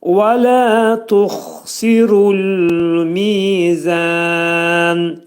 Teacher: Lə tuxsiru dedikdə tux xa hərfinin məxrəci boğazın yuxarısındadır. · Və lə tuxsiru dedikdə və hərfi dodaqlar qönçələnir, deyirik. Lə iki səs qədər qaldırılır.